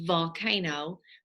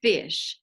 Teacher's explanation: our voice box is turned on for volcano but it's turned off for fish